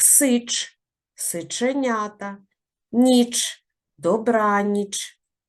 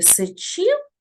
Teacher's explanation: ми дуже твердо вимовляємо приголосний ч у словах Сич сиченята ніч добраніч а от у слові сичів там пом'якшено вимовляємо